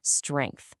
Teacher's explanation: Your mouth starts with the onset, navigating three whole consonants, the s, t, and r sounds. Then boom, it hits the nucleus, that e vowel, the core of the word.